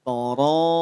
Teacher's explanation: Ra panjang 5 harokat, hukumnya mad wajib muttasil, cara bacanya panjangkan.